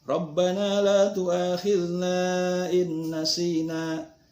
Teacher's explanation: Inna sina, in nun mati ketemu nun, maka itu termasuk kepada idgham ma'al gunnah. Jadi suara nunnya dimasukkan kepada nun, kemudian pakai gunnah, panjangnya 3 sampai 5 harkat. · Nah, la tu'akhidna di sini panjangnya bisa sampai 5 harkat karena di sini ada mad asli atau mad tabi'i, fathah ketemu alif, ke depannya ada hamzah, tapi berbeda kalimat, maka itu namanya baca idung fasil, infisal, jadi berpisah hamzahnya.